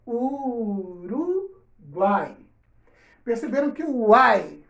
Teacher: três vogais juntas na mesma sílaba formam o tritongo